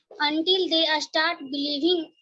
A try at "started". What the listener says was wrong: Okay, the thing which you need to change is this pronouncing this word starting from S. A skill, a spelling, a started. This is not correct. Skill, spelling, started.